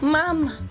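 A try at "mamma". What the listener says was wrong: No guys, you're saying it wrong. Hey, listen, you're saying it wrong. It's mama with double M. Mama. Double M.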